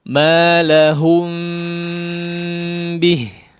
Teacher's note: menggunnahkan dengan gunnah yang dipanjangkan